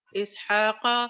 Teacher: قاف کو تھوڑا سا موٹا کرو